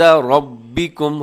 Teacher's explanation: ربکم میں را کے اوپر زبر ہے تو را موٹی پڑی جائے گی ، اور ربکم کے آخر میں میم ساکن ہے اور آگے